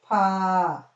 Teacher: ప లో మహా ప్రాణాక్షరం అన్నమాట గాలి వదులుతూ పలుకుతాం ఈ ఈ మహాప్రాణ అక్షరానికి గీత ఉంటది కింద సేమ్ ఇలాగే రాయాలి ఇదిగో